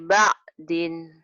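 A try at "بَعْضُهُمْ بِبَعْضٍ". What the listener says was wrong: Akhirnya belum mantap tuh. Gitu kayak nelen sesuatu.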